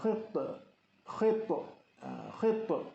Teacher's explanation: Ta ialah juga huruf qalqalah dan ianya bertanda mati, qalqalah sughra.